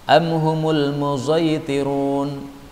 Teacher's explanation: Boleh juga dibaca dengan shad yang dicampur dengan zain.